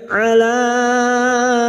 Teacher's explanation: mad jaiz munfasil, 5 harokat kita panjangkan